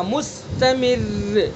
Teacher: اب را مشدد ساکن ہے، را مشدد ساکن سے پہلے میم کے نیچے زیر ہے تو اس لیے را کو باریک پڑھیں گے